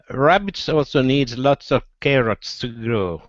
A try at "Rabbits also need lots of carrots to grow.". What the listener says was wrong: Okay, all right, watch those S's, okay? So rabbits also need lots of carrots to grow.